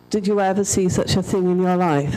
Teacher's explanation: one two three four five six seven eight nine ten eleven eleven syllables taking the same amount of time as three so I've squashed words together